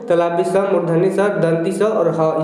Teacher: तो इसको उष्ण व्यंजन क्यों कहते हैं, तो इसका उच्चारण जो होता है रगड़ या घर्षण से उत्पन्न होता है।